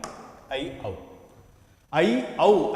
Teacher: ఐ, ఔ అనేటువంటి ఈ రెండింటిని మనం 3 మాత్రల కాలంలో మనం ఉచ్చరించాలి. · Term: ప్లుతములు